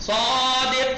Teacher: स्वादिक, स्वाद पे जबर है, उसी को जबर को खींच दो तो अलिफ पर बना है, तो स्वाद में तफखीम तो अलिफ में सब तफखीम